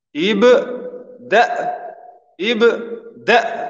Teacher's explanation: Hemzeja vjen me sukun në fund të fjales dhe e kem një gjysëm tingulli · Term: Hemzës